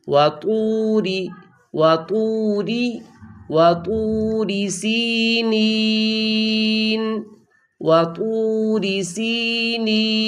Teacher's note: را کی زیر کو معروف پڑھنا ہے اور اس کی آواز کو جھکانا ہے